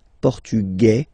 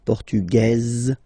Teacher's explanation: masculine portug you don't pronounce the S feminine form portuges you pronounce this Z sound